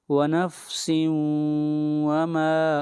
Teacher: ونفس وما، ونفس کے اوپر ادغام مع الغنہ ہوگا۔ ونفس وما، ما کو کھینچ کر پڑھیں گے 1 الف کے برابر